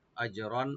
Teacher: হামজাকে right দিবেন, জিমে একটু কলকলা হবে। আজরন, আর আর উপর যে তানবিন, এখানে আমরা জাহার করব।